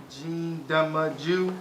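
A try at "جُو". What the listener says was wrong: Not jim dhamma ju. Jim dhamma wow sukoon ju. It's you can say wow med. Same thing, but we refer to sukoon. Jim dhamma wow sukoon.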